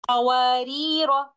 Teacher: دونوں صورتوں میں اس لفظ کے آخر میں موجود الف کو نہیں پڑھا جاتا